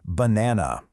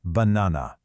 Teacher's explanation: We stress just one part, banana, in the middle, and the other vowels just get weak. They turn into that schwa sound.